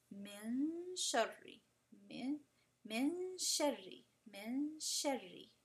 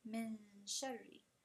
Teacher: it will use the ghunna sifa, and it will never touch the hard palate, and it will go straight into the next letter. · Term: ikhfa